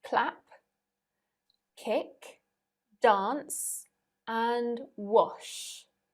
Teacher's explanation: none of the endings have voice in them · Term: unvoiced consonant